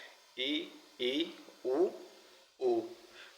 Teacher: तो यहाँ पर जो मुंह रहता है तो आधा बंद रहता है। इसके बाद सवृत स्वर है यानी मुख्यतः मुंह बंद ही रहता है, ई, उ, ऊ। तो ये चार प्रमुख स्वर हैं तो इनमें मुख्यतः जो उच्चारण करते समय मुख बंद रहता है तो ये सवृत स्वर कहलाते हैं।